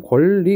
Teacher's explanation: 니은이 리을로 바뀌었고 혹시 영향을 주는 친구가 있을까? 바로 뒤에 리을이라는 애가 영향을 줬네. 그러면 영향을 주는 애가 뒤에 있고 받는 애가 앞에 있으니까 얘는 역행동화가 되겠죠.